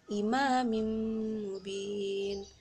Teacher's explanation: Ini tanwin imamim mubin. Mim sukun bertemu dengan mim. Mim bertemu dengan mim. Jadi bacanya ya dengung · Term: idgham mimi